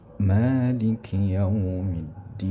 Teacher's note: ma-nya dipanjangkan ya, ma-nya dipanjangkan 2 harakat · Maliki Yaumiddin harus panjang 2 harakat. Yaumiddinnya panjang sampai 6 harakat karena hukumnya sama di sini ya, sama.